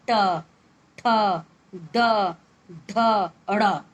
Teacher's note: ये है मूर्धन्य, यानी इसको आपको थोड़ा सा टेढ़ा करके बोलना है। ट, देखिए आपको जीभ को थोड़ा सा टेढ़ा करना।